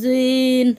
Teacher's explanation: জ জিহ্বার আগা থেকে মোটাভাবে আদায় হবে